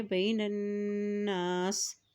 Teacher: جب نون کے پر شد آتی ہے تو غنہ بھی ادا کیا جاتا ہے، تو یہاں پہ غنہ ادا کریں گے.